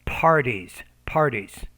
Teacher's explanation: you need to pronounce that P with more air